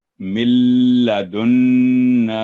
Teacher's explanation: لام جب ادغام ہوا لام کے ساتھ تو کلیئر آواز لام کی آئی